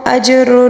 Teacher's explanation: جیم کے اوپر ساکن جب بھی آ جائیں تو اس کو قلقلے کے ساتھ پڑھیں گے